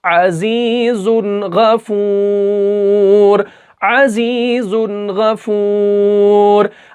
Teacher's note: اظہار ہوگا، یعنی بغیر گنہ کر کے ہم اس کو ادا کریں گے